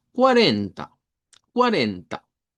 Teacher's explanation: Cuando nosotros decimos el número 40 en español, digamos que se escucha bien plano, pero en portugués al centro debe de llevar fuerza de voz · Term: sílaba tónica